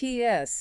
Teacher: it starts like a t a quick air stop with a tongue tip and immediately releases into an s pushing air through a narrow gap So, it's a rapid two-part sound.